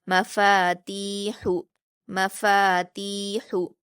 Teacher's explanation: ہا حروف حلقی میں سے ہے اس لیے اس کو ہم حلق سے ادا کریں گے، باریک پڑھیں گے